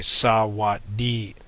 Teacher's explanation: Therefore, you can see these special markers that are added, these vertical lines, indicate the tone that is required, the melody that is required in order to produce these sounds. So you see you have 2 low tones and then a mid tone.